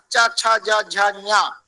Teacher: ये सारे वर्ण तालव्य वर्ण होते हैं, तालु से उत्पत्ति होती है, इसलिए तालव्य वर्ण होते हैं